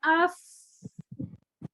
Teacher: فا میں بھی ہمس ہوتا ہے، اف، ہوا باہر نکلتی ہے.